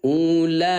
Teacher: ya panjangkan empat ketukan cara bacanya